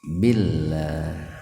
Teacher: Lafdul jalalah, lebih tepatnya huruf lam, didahului kasroh, maka lamnya dibaca tipis gitu. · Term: tarakik